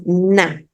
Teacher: en la producción de la N hay una salida de aire por la nariz